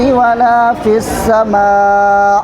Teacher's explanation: یہاں پر مد زبر کو 4 الف کے برابر کھینچیں گے